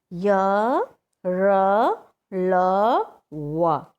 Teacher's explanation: जब य, र, ल, व बोलोगे तो एक गुंजन सा होता है, आवाज़ में एक गूंजता है, ठीक है। अंतस्थ यानी अंदर ही रह करके वह हवा गूंजती रहती है। · जिन व्यंजनों का उच्चारण करते समय जीभ मुंह के भीतर किसी भाग को पूरी तरह से नहीं स्पर्श करती उन्हें अंतस्थ व्यंजन कहते हैं।